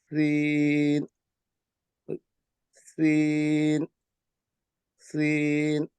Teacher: তার মধ্যে প্রথম লেটারটি হলো সিন সিন আমরা উচ্চারণ করব হলো জিহ্বার আগা সামনের দাঁতের নিচের দাঁতের গোড়ার মধ্যে লাগাইয়া উচ্চারণ করব